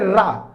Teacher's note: प्रकंपित व्यंजन क्यों कहते हैं रा को? क्योंकि रा का उच्चारण करने पे जो हमारी जीभ होती है, जो हमारी जिह्वा होती है ये वाइब्रेट करती है, · अब अगर हम बात करें रा को हम लुंडित व्यंजन भी कहते हैं, लुंडित या प्रकंपित। अगर रा का हम उच्चारण करें तो जो वायु होता है इसमें हमारी जिह्वा जो होती है ये लुढ़क जाती है, फिसल जाती है